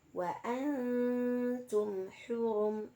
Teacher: maka cara membacanya harus jelas jelas terbaca pada makhrajnya yaitu kedua bibir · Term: izhar syafawi